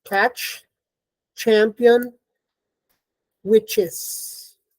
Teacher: the cha starts out as a t is released as a sh · So this is voiceless, unaspirated, palatal, African. So the ch is voiceless, unaspirated, palatal, affricate.